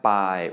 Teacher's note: you can hear that Bai is low tone, Kai is rising tone, and Dai is mid-tone